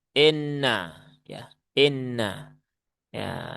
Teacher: Fathah kasroh jangan sampai terbaca miring menjadi e, inna ya, inna ya, karena logat kita sudah terbiasa ya, membaca membaca vokal i dengan dimiringkan begitu kan ya.